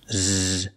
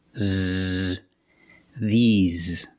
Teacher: closed and you smile a little bit e the these and the S makes a z sound like Zebra z you have a voice you have vibration